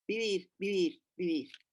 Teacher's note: in Spanish, there is no differentiation between a V and a B. So it's all in between.